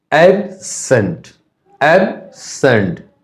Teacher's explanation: ज्यादा एम्फेसिस पड़ेगा, दबाव पड़ता है एब में, एब्सेंट फर्स्ट सिलेबल में आ गया है ना, फर्स्ट सिलेबल में स्ट्रेस पड़ गया।